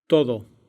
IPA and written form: ˈt̪o.ð̞o (todo)